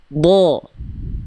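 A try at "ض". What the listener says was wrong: Dia pangkal lidahnya kurang tebal. Kurang tebal pangkal lidahnya. Kurang diangkat.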